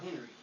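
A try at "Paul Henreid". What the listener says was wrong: Paul Henry. The D is not silent. It's not silent. Paul Henry. And you don't have to emphasize it, but it is there.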